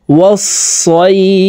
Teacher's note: এখানেও মধ্যে লিন, তাই এই সই এখানে এক আলিফ টেনে ফাকে সাকিন করতে হবে। দেখুন শব্দটি এইভাবে পড়ব, ওয়াস সইফ।